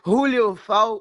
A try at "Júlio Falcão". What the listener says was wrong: No, starting with the Julio. I'm not Spanish.